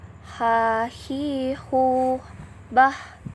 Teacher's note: Selanjutnya adalah huruf H. Huruf ini dikeluarkannya di tengah tenggorokan